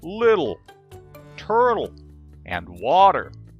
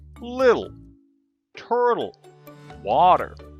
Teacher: pronounce the T like a soft D